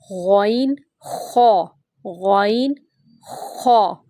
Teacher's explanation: غین اور خا جو ہے یہ پورے بھی پڑھے جاتے ہیں، یہ موٹے پڑھنے والے حرف بھی ہیں اور حلق سے بھی ادا ہوتے ہیں۔ حلق سے تھوڑی سی خراش ہوگی، یہ اوپر والے حلق کا جو منہ کے قریب والا حصہ ہے اوپر والا، یہاں سے ادا ہوں گے غین اور خا۔ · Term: ادنی حلق